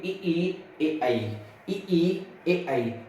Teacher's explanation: जब बोलेंगे तो आपके ओठ में क्या होगा, फैलाव होगा। जब फैलाव होगा उसी को हम कह देते हैं प्रसरित स्वर।